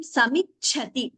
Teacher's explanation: Cha is Mahaprana. The second Cha.